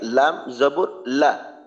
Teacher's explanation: জিহ্বার আগার কিনারা উপরের সামনের উপরের দাঁতের মাড়ির সঙ্গে লাগাইয়া